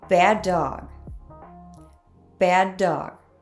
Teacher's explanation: we have two D sounds together so the words share the sound